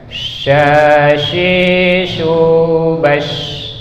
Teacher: Nah, shin jauh banget bedanya karena dia tengah-tengah lidah.